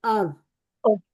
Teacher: जहर तरफुल लिसान जब ऊपर सनाया उलिया के लिसा से लगे तो हर्फ रॉ अदा होता है।